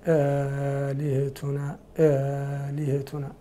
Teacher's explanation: الهمزة الأولى محقة ثانية مسهلة مع المد